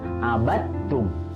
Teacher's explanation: Abattum, ya, di situ ada dal sukun bertemu dengan ta, hukumnya adalah idgham mutajanisain, artinya dimasukkan karena bertemu dengan huruf yang sejenis, ya, jadi dalnya tidak perlu dibaca, langsung masuk ke huruf ta.